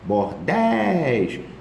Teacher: Mas bordéis não é paroxítona, é oxítona.